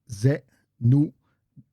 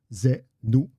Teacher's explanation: there's a glottal stop at the end. So we're pushing at the end.